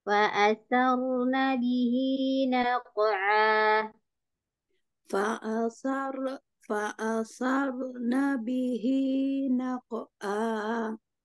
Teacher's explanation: ada huruf ro mati, ro sukun, sebelumnya dia harokatnya fathah, ro-nya kita tebalkan ya